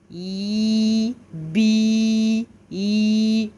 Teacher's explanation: Et la lettre ya maddiya ou bien le ya allongé ou prolongé où le milieu de la langue monte. I, bi, i. Je sens le milieu de la langue qui monte.